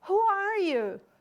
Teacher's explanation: eu começo aqui com a entonação mais alta e vou descendo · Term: falling intonation